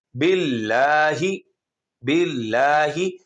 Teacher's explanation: اللہ کے نام سے پہلے زیر آئے گی تو اس کو موٹا نہیں کریں گے